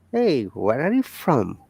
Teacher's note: We are stressing on from.